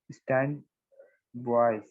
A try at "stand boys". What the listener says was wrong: Stand boys नहीं, boys. Stand boys. एक ही साथ में बोलना है. Stand boys. ये सेपरेट बोलने से तो अंग्रेजी नहीं है, वो दूसरा होगा. Stand boys नहीं बोलना. Stand boys.